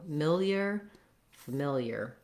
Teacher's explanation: the first syllable is short and relatively unimportant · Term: second syllable stress